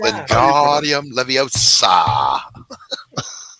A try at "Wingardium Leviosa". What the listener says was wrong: You're supposed to pronounce the O. The O is what you hold on. Leviosa. Not Leviosa.